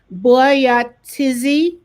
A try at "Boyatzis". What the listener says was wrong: Well, there's nothing between the T and the Z. So it's Boyatzis.